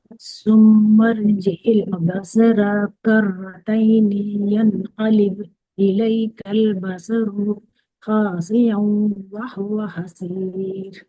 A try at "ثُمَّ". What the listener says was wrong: جی ماشاء اللہ، جو ثم، جو فرسٹ لیٹر ہے سین سا، وہ سین جیسا ثم نہیں ہوگا، ثم ہوگا، ٹھیک ہے، سا ہاں جی جی ایسے، ٹھیک ہے انشاءاللہ۔ اور ثم ارجع البصر، با باریک ہوگا لیکن صاد اور رو موٹا کریں گے، کرتینی میں رو کو پھر سے ہے نا،